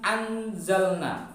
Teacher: tetapi lidah kita sudah membentuk makhraj huruf setelahnya dalam ayat ini adalah huruf z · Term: bacaan ikhfa